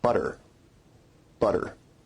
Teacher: your tongue is producing a tap sound there rather than a full stop